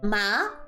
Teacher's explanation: The second tone is ma. So the second tone here means that you're rising up in the tone.